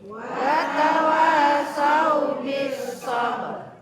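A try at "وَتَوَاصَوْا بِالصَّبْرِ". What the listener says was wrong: Itu watawasaw, bukan watawasyaw. Watawa pakai huruf shad.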